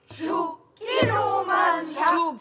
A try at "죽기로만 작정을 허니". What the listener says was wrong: 죽기로만 그물 내려와야지 죽기로만 작정을 허니 음이 내려왔는데 계속 동동해갖고 있으면 안 되지 죽기로만 작정을 허니 그러니까 석가리에 목을 메고 죽기로만 작정을 허니 시작